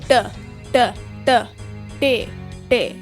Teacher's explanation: This hat basically means that it's pronounced like the previous letter, but with the flick of the tongue. A flick of the tongue from the ridge in your mouth all the way to your front teeth.